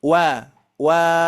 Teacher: tidak masuk ke rongga hidung itu ya jadi rongga mulut